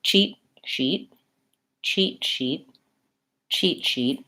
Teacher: the CH looks like a t plus an SH sound and that's basically what it is